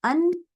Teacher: अन कहने के साथ ही आपकी आवाज कहाँ जाती है? नाक में जाती है, लेकिन उसके बाद चूंकि आइन है आइन के तो मतलब आप आवाज से आप नून के मखरज पर ठहरते नहीं है, आप फौरन आइन के ऊपर चले जाते हैं, तो इस वजह से आवाज नाक में नहीं रहती, आपको बहुत देर तक वो गुन्ना जो है वो सुनाई नहीं देता।